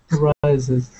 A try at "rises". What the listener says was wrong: There you go. One more time.